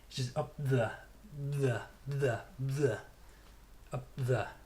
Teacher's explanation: You make the position for the P by closing your lips, but because the next sound is th, you don't release your lips as you would do normally with the P.